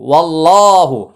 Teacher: ওয়াও লাম জবর ওয়াল, লাম খারা জবর লা, ওয়াল্লাহ হাফেশ হু, ওয়াল্লাহু। আল্লাহ শব্দের উচ্চারণ মোটা হয়েছে, মাঝখানে আলিফ লাম বাদ হয়ে গিয়েছে, লা এক আলিফ টান, হাফেশ হু তাড়াতাড়ি, ওয়াল্লাহু।